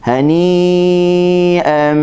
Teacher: Hani kita baca dengan mad wajib 4 harakat